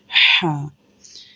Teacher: اب یہاں پر تا لیٹر کے بعد جو ہا لیٹر ہے، یہ والی ہا جو ہوتی ہے اس کا ساؤنڈ ہوتا ہے ہا۔ دس ہا comes from the middle part of the throat۔ اس ہا کے اوپر اسٹینڈنگ زبر ہے جسے ہم اسٹینڈنگ فتحہ بھی کہتے ہیں، اور اس کے اوپر یہ جو مد کا سائن ہے، یہ مد کا سائن دیکھیں۔